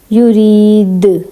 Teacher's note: دال کو تھوڑا سا ہلائیں گے, کیونکہ دال جو ہے حروف قلقلہ ہے اور جب یہ ساکن حالت میں آتا ہے تو اس کو ہلا کر پڑھتے ہیں